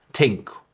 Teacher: The unvoiced TH sounds like think or thought tend to become a t,